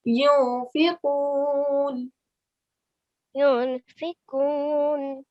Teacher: But because fa is not one of your throat letters, we're going to give a half nasal sound here. We're going to hide or conceal the sound of the noon.